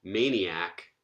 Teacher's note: maniac, where that second to last syllable is unstressed.